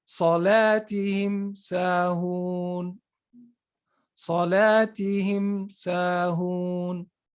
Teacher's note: So you clearly pronounced it, but you didn't stay on it with a ghunna. · it has to be pronounced clearly by making a complete contact of the two lips, just like you pronounce a normal meme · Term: izhar